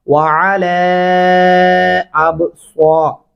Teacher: یہاں با پہ کلکلا کرنا ہے اور صاد کو موٹا پڑھنا ہے